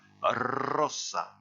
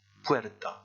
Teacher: Le R tout seul, placé au début, se prononce fort. Ici, dans le mot puerta, il se prononçait faiblement